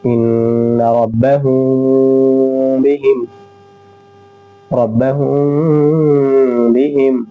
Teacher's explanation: اخفاء شفوی، یعنی میم ساکن کے بعد با آئے تو اخفاء شفوی ہوگا، غنہ کے ساتھ ہم اخفاء کریں گے